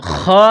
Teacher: جس طرح انسان گلے سے بلغم نکالتا ہے اس طرح خا کو نکالیں گے